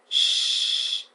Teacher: Remember, this sh sound is voiceless, post-alveolar fricative. Okay, the sh is a sound from the consonants pairs group, and it is called the voiceless palato-alveolar sibilant. This means that you create friction through clenched teeth by directing airflow through a narrow channel formed along the middle of the tongue.